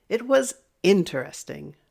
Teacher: If you're excited about it, then you're going to raise your voice, but you're going to drop it at the end.